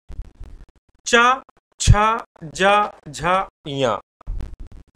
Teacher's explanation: चा वाली लाइन तालु से